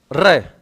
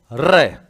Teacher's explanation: वह व्यंजन जिसके उच्चारण में जिह्वा को 2-3 बार कंपन करना पड़ता है, प्रकंपित व्यंजन कहलाता है।